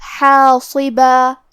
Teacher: کلمت حاصبہ میں حرف الحا کی ادائیگی حلق کے درمیان والی حصے سے ہے، اور کیونکہ اس کے بعد مد الف ہے، مد الف اپنے پیچھے والے حرف کا حکم لیتا ہے تفخیم میں اور ترقیق میں، تو کیونکہ اس کے پہلے حا کا حکم ہے ترقیق، تو ہمیں حا کو اور مد الف کو ہلکی آواز میں پڑھنا ہے، حاصبہ۔ کیونکہ صاد حروف التفخیم میں سے ہے تو ہم صاد کو بھاری آواز میں اور منہ پھلا کے پڑھیں گے۔